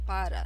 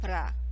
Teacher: in spoken Brazilian Portuguese, you will not hear people saying para. They will say pra